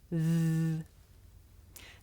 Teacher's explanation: The sound comes from between my tongue and my top teeth. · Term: voiced consonant